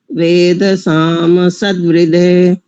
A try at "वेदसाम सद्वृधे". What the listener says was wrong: बढ़िया अब ठीक है।